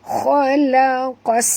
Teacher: Di atas sin ada tasydid. Bunyikan safir pada sin. Khalaqas. Bunyi desir angin kan.